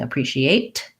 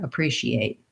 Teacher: Americans will often use a stop T there